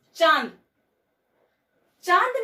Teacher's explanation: अनुनासिक का उच्चारण के समय मुंह के साथ साथ नाक से भी वायु बाहर निकलती है।